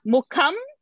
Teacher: because ba is in a pavarga, so anuswara became ma only